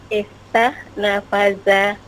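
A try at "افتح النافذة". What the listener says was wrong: Bukan nafada ya. Ini nafidah. An-nafidah, jendela. Bukan nafada, nafidah.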